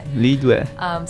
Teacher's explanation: that is second tone and then fourth tone.